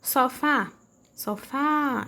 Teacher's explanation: esse fá do sofá é aquele que foi pronunciado com mais intensidade. Então, é a sílaba tônica.